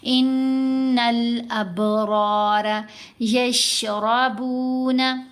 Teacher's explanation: ابھی دیکھیں را کے اوپر دونوں جگہوں پر زبر ہے تو ہم اس کو پر پڑھیں گے، موٹا پڑھیں گے